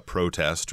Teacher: verb would be the stress would be on the second syllable as a noun if you're going to a protest or if you read about a protest in the newspaper it would be on the first syllable